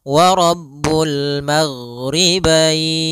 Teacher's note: Kemudian di sini huruf ghain, hati-hati dalam pelafalannya, jangan sampai memantul, jangan maghribain wa Rabbul maghribain sampai dia memantul. Nah, karena huruf ghain tidak ada sifat qalqalah, tidak ada sifat pantulan.